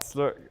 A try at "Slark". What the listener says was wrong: Slark. Slark does not have a U in it.